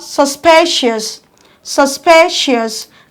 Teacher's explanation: your stress falls on the second syllable you have to strike the syllable louder than other syllables of the same word